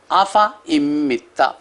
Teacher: فا کے بعد جو الف ہے وہ نہیں پڑھا جائے